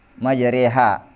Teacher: huruf yang difalkan condong dari alif ke ya atau dari fathah ke kasrah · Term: imalah